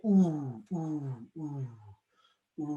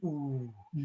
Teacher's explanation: given the sound ooh, are going to mirror what it does in the mouth, which is it's back, closed, and in. Ooh. It's the most introverted and quiet of the vowels.